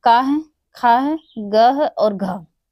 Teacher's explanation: कंठ से उच्चारित होने वाला का है, खा है, ग है और घ, ये 4 जो हमारे हैं ये कंठ से उच्चारित होते हैं